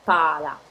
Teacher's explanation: You see the L is just slightly pronounced, so it's pala.